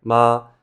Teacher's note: in the dictionary, that's a high flat tone